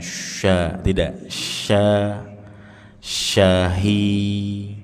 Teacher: sya tengah-tengah lidah. Jangan dibaca mirip sin biasa.